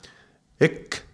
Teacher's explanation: there is the contraction of the K, and that's happening in the throat